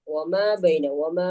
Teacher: 2 ഹറക്കത്തിൽ കൂടുതൽ നമുക്ക് എന്ത് ചെയ്യാൻ പറ്റില്ല, നീട്ടാന് പാടില്ല. അത് സാധാരണ മദ്ദാണ്, സാധാരണ ദീർഘമാണ്. അതെ. അപ്പോ അവിടെ ഒമാ ബൈന ആ ഒരു ദൈർഘ്യമാണ് 2 ഹറക്കത്തുള്ളത്.